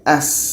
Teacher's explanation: Sin ini letaknya pada ujung lidah menempel dengan bagian atas gigi seri bawah.